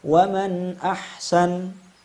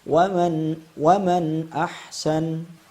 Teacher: kita izharkan suara nunnya sebelum masuk ke huruf ha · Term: izhar halqi